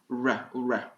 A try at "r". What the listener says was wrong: C'est pas ra. Donc, il faut un peu courber la langue. Courbe un peu ta langue vers l'arrière.